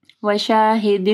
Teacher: تنوین ہے، اس کے بعد واو آ رہی ہے، ٹھیک ہے، ادغام آ رہا ہے غنہ کے ساتھ